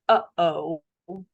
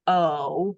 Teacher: say oh because those vowels are going to blend together so we put in what's called this glottal stop it's this little hiccup in your voice uh oh and it serves as a functional consonant to separate